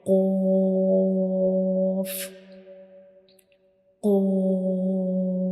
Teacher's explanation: the very back part of our tongue will touch the soft palate